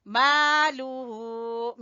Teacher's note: मीम के साथ अलिफ मद्दा, और लाम को छोटा पढ़ेंगे और हु को खींचेंगे। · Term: मद सिला कुबरा